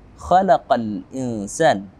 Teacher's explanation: Kita sebut dengan alif lam qamariyah atau izhar qamariyah yang wajib kita baca dengan jelas huruf alif lam tersebut